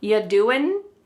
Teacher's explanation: Listen to that g at the end. Y doing. It's gone.